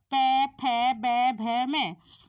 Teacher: प फ ब भ म इसमें हमारे होठ आपस में मिलते हैं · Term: प वर्ग